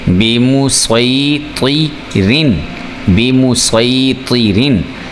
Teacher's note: आपने रॉ को बारीक पढ़ना है, पुर करके मोटा करके नहीं पढ़ना। तो इसलिए उसी का जो कानून था, उसी कानून के तहत जो है वो इसको हम बारीक पढ़ेंगे।